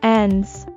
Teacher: Also note that the s added to the end of the word end is a z sound